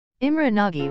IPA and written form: ˈimrɛ ˈnɒɟ (Imre Nagy)